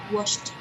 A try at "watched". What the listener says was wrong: Watched. Yes, this is not washed. Washed is a different verb. This is watch. Watch. Ch, ch. There is a final sound of ch in the end.